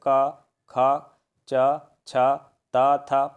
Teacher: अघोष व्यंजन इसमें किसी प्रकार का कंपन या गुंजन नहीं होगा जैसे क ख च छ त थ पहला और दूसरा वर्ण